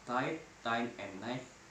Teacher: This diphthong begin with open vowel which is between front and back.